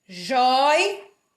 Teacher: Joias, porque o O e o I ficam na mesma sílaba, há um ditongo